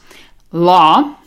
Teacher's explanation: roll the tongue back so you have a nice thick L sound